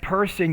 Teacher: you can pronounce that P with more aspiration